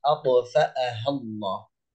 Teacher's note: حرف الطاء في قلقل وهو ساكن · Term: القلقلة